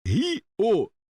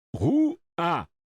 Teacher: Vogais lado a lado na palavra, mas separadas nas sílabas. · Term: hiato